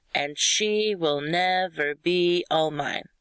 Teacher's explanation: Unstressed, stressed, unstressed, stressed. Unstressed, stressed, unstressed, stressed. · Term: iambic